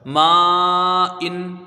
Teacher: میم کے ساتھ الف مدہ ہے، حرف مد کے بعد حمزہ اسی کلمے میں ہے تو یہاں مد متصل ہوگا، اس کو 2، 2.5، 4 الف کے برابر تک کھینچ کے پڑھا جائے گا